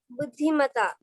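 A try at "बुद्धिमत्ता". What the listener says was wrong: बुद्धिमता, very good.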